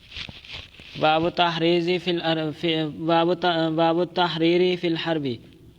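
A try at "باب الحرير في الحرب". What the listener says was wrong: کی باب، تا تو ہے ہی نہیں. باب الحریر، ریشم، لڑائی میں،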